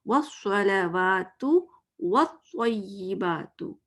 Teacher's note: واو زبر واو از round lips, گول میں نے بنا دیا